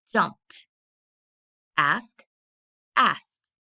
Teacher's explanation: The word jump. It ends in an unvoiced consonant. I added ED, and it's going to be pronounced with the T sound.